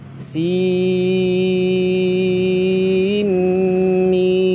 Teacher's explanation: Sekarang, lalu kita idgham nun sukun ke dalam mim. Karena aturan untuk nun sukun meeting mim adalah idgham bighunah. · Nah, kemudian nun sukunnya kita idghamkan ke mim karena hukum nun sukun ketemu mim adalah idgham bi gunnah